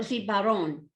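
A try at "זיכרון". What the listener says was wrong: That's a kaf. Zikaron.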